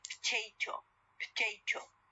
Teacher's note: there is elision of the O sound